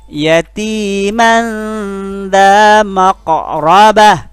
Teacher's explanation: Karena ikhfa, maka bunyi man-nya, n-nya itu sedikit samar karena bertemu bunyi za.